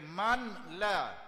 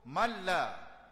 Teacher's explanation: Malla. Walaupun ada nun tapi itu idgham tidak boleh dengung.